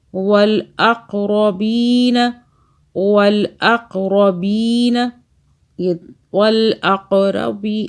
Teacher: یہ قاف پہ قلقلہ کریں، جھٹکے سے پڑھیں